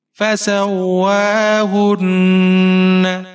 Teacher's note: ہا کے اوپر پیش ہے، نون مشدد ہے، ہا کو نون کے ساتھ ملائیں گے اور یہاں پر غنہ کریں گے۔ نون کے اوپر زبر ہے، بغیر کھینچے پڑھیں گے۔